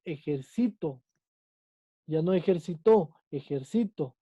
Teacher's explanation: su sílaba tónica está en la antepenúltima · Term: palabra esdrújula